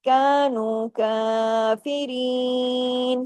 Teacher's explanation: کاف کے اوپر کھڑی زبر ہے، الف کے برابر کھینچے گا. کافرین، تمام باریک حروف ہیں، باریک طریقے سے پڑھے جائیں گے.